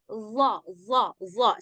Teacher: ujung lidah bertemu dengan dua gigi atas bagian luar.